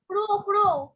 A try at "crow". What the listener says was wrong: It is crow, not cow. Crow. হ্যাঁ, আমি শুনেছি cow, so crow.